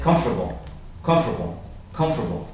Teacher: And actually that T sound, I shouldn't even put that in there, because that T sound almost disappears